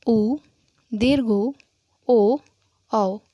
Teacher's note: जब भी आप इसका उच्चारण करेंगे ऊ, दीर्घ ऊ, ओ, औ, तो होंठ की जो आकृति है वो गोल हो जाएगी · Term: वृत्ताकार स्वर